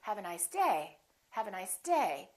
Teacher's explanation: I'm still going to emphasize the word day, but I'm not going to make my pitch go up. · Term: intonation